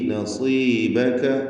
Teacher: സ്വാദിന് കുറഞ്ഞ തഫ്ഖീം കൊടുക്കണം, കസ്റായതുകൊണ്ട്